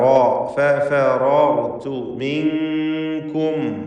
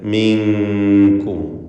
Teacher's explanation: സാക്കിനത്തെ നൂനിനെ ഇഖ്ഫാ ഹഖീഖി നൽകി മറച്ച് മണിക്കണം. കാഫിന് മുമ്പിൽ മിൻകും.